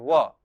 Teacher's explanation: व का उच्चारण स्थान दांत और ओट दोनों है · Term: दंतोष्ठम